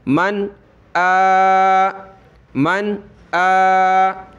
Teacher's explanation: تو یہاں نون ساکن پر ہم غنہ کیوں نہیں کر رہے؟ حمزہ حروف حلقی کی وجہ سے